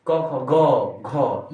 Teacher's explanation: ये बोलते हैं हम लोग कंठ से